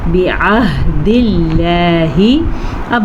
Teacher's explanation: اب یہاں پہ ہم لفظ اللہ کو باریک پڑھ رہے ہیں کیونکہ لفظ اللہ سے پیچھے زیر ہے